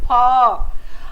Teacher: फ में हमारा जो नीचे का होठ है और ऊपर के दांत जो है उनमें आपस में संघर्ष होता है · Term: संघर्षी व्यंजन